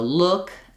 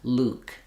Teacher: Look has our U vowel and Luke has our tense u vowel.